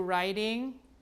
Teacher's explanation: when you change it to the ing form this T is not a stop anymore right it becomes more like an R right